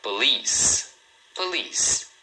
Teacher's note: Então, a pronúncia é police. Então, a primeira sílaba é bem rapidinho, é mais suave. Um detalhe aqui é o seguinte, cuidado porque muita gente fala policy, acaba lendo as letras.